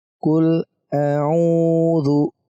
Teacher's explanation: Pertama a biasa, kedua ain kita tekan.